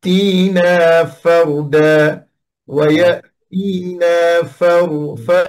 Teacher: ويأتينا baik, di sini ada takrir fardani. Di fardani ada takrir dan ada inhiraf. Dan fard ada tambahan dengan suara yang tebal.